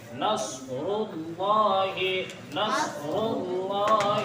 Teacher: اذا جاء نصر اللہ، نص نہیں ہونا چاہیے، یہاں صاد نکالیں گے، نصر اللہ، پھر را کے اوپر پیش ہے تو اس را کو پر کریں گے